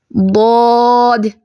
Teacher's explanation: اس کو تھوڑا سا لمبا کر کے ادا کرتے ہیں جب ہم بطور حرف پڑھتے ہیں. اور ایک چیز میں آپ کو ادھر ہی سمجھا دوں، اس کو نہ تو آپ نے ضاد پڑھنا ہے، کچھ لوگ ہوتے ہیں جو اس کو ضاد پڑھتے ہیں، اور کچھ ایسے کہ دال کی طرح موٹا صحیح نہیں کرتے، اس کا مخرج کا دھیان نہیں پڑھتے.